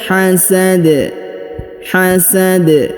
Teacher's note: huruf Dal karena berada di ujung ayat atau ujung bacaan maka kita sukunkan ya karena dia sukun maka dibaca pantul atau Qalqalah